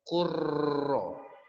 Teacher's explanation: lamnya dihilangkan langsung ke huruf yang kedua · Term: Idgham